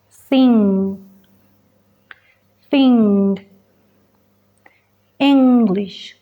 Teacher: Aquí el aire se bloquea en la parte trasera de la boca porque la lengua lo está tapando totalmente ahí con el paladar blando. Así que el aire se desvía y se libera por la nariz. Siente la vibración en tu nariz y en tu garganta.